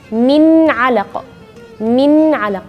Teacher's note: huruf ain, yaitu bagian tengah-tengah tenggorokan